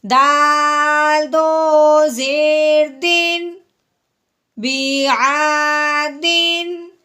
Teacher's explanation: تنوین کے بعد آگے جو ہے وہ آگے حمزہ حروف ہلکی میں سے ہے، اس لیے ہم نے تنوین پہ غنہ نہیں کرنا